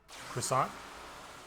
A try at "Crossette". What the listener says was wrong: No, croissettes. There's no croissant. There's no N in that word. It's croissette.